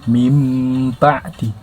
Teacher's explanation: Iqlab itu hurufnya cuma ada satu ba. Dan ketika nun mati bertemu huruf ba tersebut, maka dibaca mim